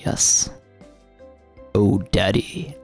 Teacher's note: I'm trying to keep the voice up. And if I go even lower, you can hear that I've really widened up the resonance elsewhere in my throat